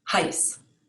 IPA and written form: haɪ̯s (heiß)